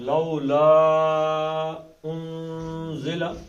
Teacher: لا مدے اصلی ہو گیا دو حرکتیں اور آگے کیا آ گیا حمزہ. تو اس کو کتنی حرکتیں؟ چار.